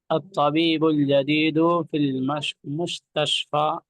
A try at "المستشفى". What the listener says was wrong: ارے کتنی شین آپ کو نظر آ رہی ہے کہ مستشفى آپ پڑھ رہے ہیں.